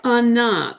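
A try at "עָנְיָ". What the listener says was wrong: anya, not ana.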